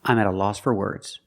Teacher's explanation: four is pronounced fur fur because it's not stressed